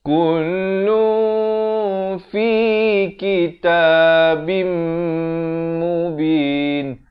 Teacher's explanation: Di sini idgham bi gunnah. Daripada kitabin jadi kitabim. Tapi jangan lupa dengungkan 2 harakat.